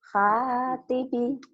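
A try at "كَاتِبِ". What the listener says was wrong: Bukan H tapi K ya.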